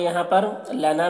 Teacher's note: لنا میں الف مدہ ہے، 1 الف کے برابر کھینچ کر پڑھیں گے۔